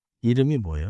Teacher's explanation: 이름이 부분을 이르미처럼 이어요.